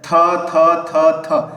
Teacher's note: दंत से निकल रहा है, तो दंत व्यंजन हो जाएगा